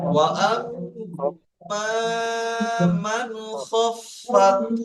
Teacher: মিম রুফে হালকি 6টি অক্ষরের মধ্যে খ এসছে, তাই একে বিনা গুণনায় জাহির করে তাড়াতাড়ি পড়তে হবে।